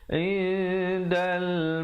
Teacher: Jangan lupa ikhfa 2 harakat. Sembunyikan bunyi nun matinya di belakang dal dengan kadar panjang 2 harakat.